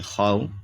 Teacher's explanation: خو واو زبر خو، یہ حرف لین ہے اس لیے واو نرمی سے پڑھیں گے